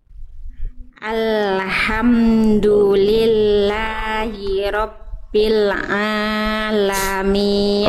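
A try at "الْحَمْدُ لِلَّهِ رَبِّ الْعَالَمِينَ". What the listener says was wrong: Oke, ainnya tinggal pertama kita dari panjang pendek dulu aja. Jangan kepanjangan Bun, jangan alhamdulillahi rabbil alamin. Ainnya kepanjangan. 2 harokat. Rabbil alamin.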